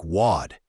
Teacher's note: The T in what might even be a flap T sound which is similar to a light D sound in American English